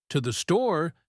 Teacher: to the store sounds like one long word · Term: connected speech